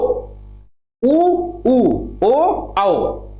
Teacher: जैसे ऊ जब बोलते हो तो ओठ दोनों कैसे होते हैं, गोल गोल हो जाते हैं। ऊ यानी बड़ा ऊ, बड़ा ऊ, ओ आओ, ऊ ऊ ओ आओ, तो ओठ कैसे, गोलाकार है। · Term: वृत्तमुखी